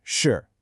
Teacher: It's got a falling tone, so your voice starts high and drops down. Shì. You use it to connect two nouns to state a fact.